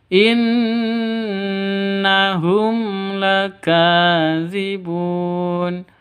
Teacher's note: Hum la mim mati bertemu dengan lam, jelas terang karena izhar safawi. Izhar safawi jelas terang, tidak boleh sentak, tidak boleh dengung.